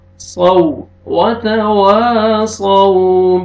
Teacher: صاد کو موٹا کر کے پڑھیں گے اور واو لین نرمی سے ادا کریں گے